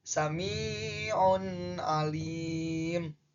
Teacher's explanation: baca nun matinya jelas karena nun mati bertemu dengan H dan H itu termasuk hukum bacaan idhar, maka dibacanya jelas.